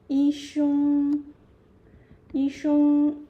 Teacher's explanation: here 生 can be neutral tone, can be first tone.